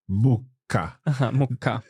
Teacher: Mucca. With that, it almost sounds as if the sound stops for a second.